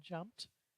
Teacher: When you put a past tense marker on, it can surface as a T as in jumped